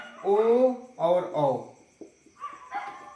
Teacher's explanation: कंठ और ओष्ठ आपका ओ और औ का उच्चारण करते हैं